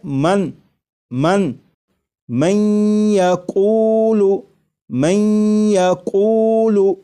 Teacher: یہاں پر دیکھیے گا یہ نون ساکن ہے، نون ساکن کے بعد جب یا آ جائے تو نون ساکن کو یا میں ادغام کر کے پڑھیں گے، ملا کر پڑھیں گے، اور نون ساکن کو یا میں ادغام اس طرح کریں گے کہ غنہ بھی ہو، جیسے لکھا ہوا ہے من من من یقول من یقول، تو میم کے بعد آپ کو یہ جو آواز آ رہی ہے میں این این، یہ نون ساکن کا یا میں ادغام بھی ہو رہا ہے، اور ادغام اس طرح ہو رہا ہے کہ غنہ کے ساتھ۔